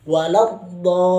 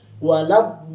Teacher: Kemudian masukkan kepada tasydid lam. Dan tidak ditahan pada bunyi tasydid huruf lam tersebut